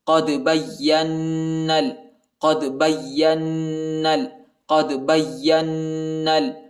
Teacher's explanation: قاف کو دال کے ساتھ ملائیں گے اور دال کو جھٹکے کے ساتھ پڑھیں گے، یعنی دال پر قلقلہ کریں گے، حروف قلقلہ کا حرف ہے. · با کو یا کے ساتھ ملائیں گے، یا کو نون کے ساتھ ملائیں گے اور غنہ بھی کریں گے